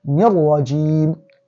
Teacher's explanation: Insertion without the ghunna, and that is what idgham bi ghayri ghunna. That's how we said shaytanir rajim is like you're saying noon kasra, ni and ra fatha ra, nirra with shadda, nirrajim.